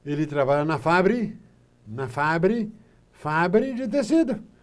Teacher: transforma a palavra fábrica em 2 sílabas e faz paroxítono